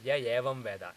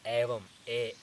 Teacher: It should be Evam, A. When you say A, there's no Yakara explicit in it. Whereas when you say Evam, you actually get the Yakara.